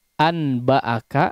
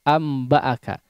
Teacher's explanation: seperti ini ya maka alternatif paling mudah secara pengucapan adalah apa diganti Nun sukunnya menjadi mim sukun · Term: hukum iqlab